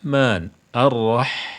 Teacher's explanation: kalau kita membaca Ha ini seakan-akan ya tenggorokan kita itu ada hambatannya ada hambatannya sehingga udara yang keluar itu lebih irit ya Man arrah ya jadi suaranya jadi udaranya tidak keluar semua